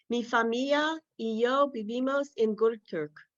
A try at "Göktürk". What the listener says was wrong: Göktürk. Yes, perfect. Very good.